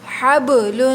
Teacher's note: با پہ قلقلہ ہوگا، لام پہ تنوین ہے، تنوین پہ غنہ ہوگا۔ ہا کو حلق کے درمیان سے ادا کریں گے، حبل، آگے وقف حبل، جب وقف کریں گے لام کو ساکن کر دیں گے۔